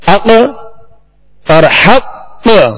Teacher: جیسے ہم نے حق اور حق محسوس کیا آپ نے، تو جو ساکن حرف حروف قلقلہ تو اس کی بنسبت مشدد حرف جب اس پر وقف کیا جائے تو اس میں خوب قلقلہ ظاہر ہوگا، آواز جو ہے زیادہ لوٹتی ہوئی محسوس ہوگی